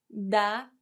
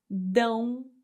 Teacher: the sound comes out of your mouth and nose for a nasal sound. Dá, open sound, dão, nasal sound.